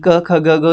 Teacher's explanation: क ख ग घ ये कंठ की आवाजें हैं